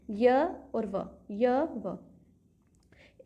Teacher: है इनमें अर्ध स्वर का मीनिंग क्या है आधा स्वर मतलब इनमें स्वर की साउंड आती है एक तरीके से आधे स्वर की साउंड